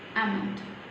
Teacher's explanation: L is silent here. Silent means when we write, L is there, but when we say it, L is silent. We just ignore L there.